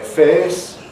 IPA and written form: feːs (face)